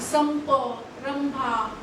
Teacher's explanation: अनुस्वाराच्या पुढे प फ ब भ म असेल तर मात्र ते शेवटचं अक्षर त्याचं म असल्यामुळे ते आपण त्याला ओष्ठव्य म्हणू, तर ओठांमधून त्याचा उच्चार होतो.